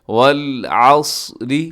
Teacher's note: صاد موٹا پڑھا جائے گا، اسے اگر آپ باریک کریں گے تو سین کے اندر تبدیل ہو جائے گا۔ والعصر، را باریک ہوگا، صاد موٹا ہے، را باریک ہے۔